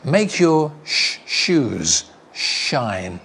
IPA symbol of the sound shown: ʃ